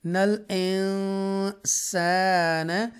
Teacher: یہاں اخفا کریں گے کیونکہ نون ساکنہ کے بعد سین آ رہا ہے، اور سین جو ہے اخفا لیٹر میں سے ہے، اور اخفا لیٹر 15 ہوتے ہیں، 15 اخفا لیٹرز ہوتے ہیں، اور جب یہ آئیں تو ہم اخفا کریں گے۔